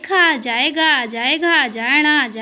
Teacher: इनका उच्चारण स्थान क्या है? कंठ।